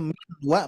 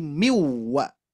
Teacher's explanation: hukumnya idgham ya maka kita masukkan ini kan dua huruf ya dua huruf kita gabungkan menjadi satu kepada huruf yang yang kedua jadi yang dibaca itu adalah huruf yang kedua jadi asalnya m wa menjadi miwwa ya itu idgham namanya ya